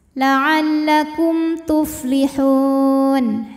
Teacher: Kum idhar syafawi karena mim sukun menghadapi huruf selain mim dan ba yaitu huruf ta, maka mim sukun dibaca jelas.